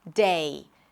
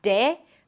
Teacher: Make sure you transition from one vowel to another, that you actually hear the E sound at the end.